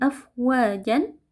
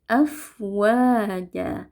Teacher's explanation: Nah, ketika kita waqaf pada huruf yang berharakat fathatain atau 2 fathah atau disebut juga dengan tanwin, maka kita di sini harus menghilangkan satu tanwinnya atau menjadikan dia hanya berharakat fathah saja, lalu kita panjangkan 2 harakat. Jadi tidak kita waqafkan afwajan, tapi afwaja. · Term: mad iwad